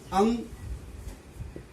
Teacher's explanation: यह ध्वनि नाक से निकलती है, पर यह अ के सहारे बोली जाती है। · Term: अनुस्वार